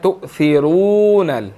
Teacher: تو یہاں پر تؤثرو حمزہ ساکن ہے، جھٹکا دے کر پڑھیں گے، اور آگے را کے اوپر پیش ہے اور آگے واو مدہ ہے، اس کو موٹا پڑھنا ہے اور تھوڑا سا 1 سیکنڈ کھینچ کر پڑھنا ہے کیونکہ واو مدہ ہے، تؤثرون، ٹھیک ہے جی۔